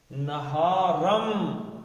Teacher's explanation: تو جب نون ساکن کے آگے میم آ جائے تو کیا کرتے ہیں جی؟ اس کو میم میں گھسا دیتے ہیں